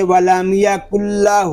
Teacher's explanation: لام پہ اپنی آواز کو ہم جاری نہیں رکھیں گے